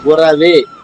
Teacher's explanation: గురవే రాకి ఉకారం ఉండదు. గురవే అలా వస్తుంది.